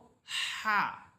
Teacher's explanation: এই হা এর যে মাখরাজ অর্থাৎ কণ্ঠনালের মধ্যখান সেখান থেকে আমরা বলবো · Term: জিমের মত হা